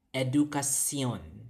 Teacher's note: the SH sound in cebuano it's a SIA sound